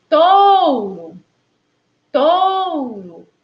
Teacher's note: A sílaba Ró já é a sílaba átona. E aí, a gente já percebe o O com som de U.